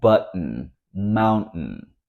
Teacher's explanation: We usually use this T when there's a combination of T plus a vowel plus the letter N, when that syllable is not emphasized. This T, you're going to feel it down here in your throat. For this one, I like to tell people to say uh-oh, so you feel this stop between and O, but you put your tongue behind your upper teeth and say For example, button, mountain. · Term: glottal T